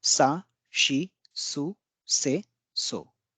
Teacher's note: The second one should have been si, but this is an exception where we don't have si in Japanese. It's always shi.